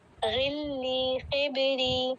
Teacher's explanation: جب خا اور غین زیر کے ساتھ آتے ہیں تو اس میں تفخیم نہیں کرتے، اس کو بھاری کرنے کی کوشش نہیں کرتے، سمپل ہی پڑھتے ہیں. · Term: خالی من التفخیم